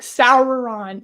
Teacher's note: the RS were enunciated but not endlessly rolled it sounded natural